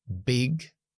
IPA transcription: bɪg